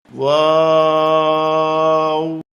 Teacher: এই হরফটি 4 আলিফ পরিমাণ লম্বা করে বলতে হবে। 2 ঠোঁট গোল করে শুরু হবে, 2 ঠোঁট গোল হয়ে শেষ হবে, মাঝে কিছু টাইম মুখ খুলে থাকবে।